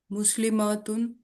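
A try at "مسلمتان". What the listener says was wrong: ماں کو لمبا کیوں کیا؟ انتی، تو ایک مسلمان عورت ہے، تم 2 مسلمان عورتیں ہو.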